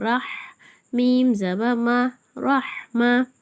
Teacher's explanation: ரஹா வந்து மெலிதான எழுத்து அப்படின்னு சொல்லிருக்கோம். காத்து மட்டும் வரணும்